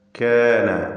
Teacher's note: കാന ഇസ്തിഫാലിൻ്റെ ഹർഫാണ് കാഫ്, അതിൻ്റെ ദീർഘാക്ഷരവും തർക്കീഖോട് കൂടി ഉച്ചരിക്കുക.